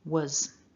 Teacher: So putting that into the word, remember our strong form was with an O. We soften the O to a schwa and it becomes was. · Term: weak form